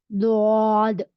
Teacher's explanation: दौद की अदायगी के वक्त जबान को शुरू से आखिर दाढ़ों तक लगाने से आवाज लंबी होती है